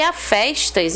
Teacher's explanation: Então esse a festas, ó, ganhou uma tonicidade, né? Uma força, enquanto que o primeiro foi átono.